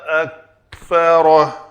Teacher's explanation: کاف اور تا دو ایسے حروف ہیں جن کو جب یہ ساکن ہوں تو یہ آواز بالکل بھی اس کی کلکلہ کی طرح نہیں آنی چاہیے